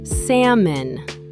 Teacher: The L is silent, pronounced salmon.